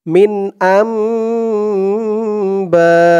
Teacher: বা, বা এখানে 4 আলিফ টান হবে, মধ্যে মুত্তাসিল।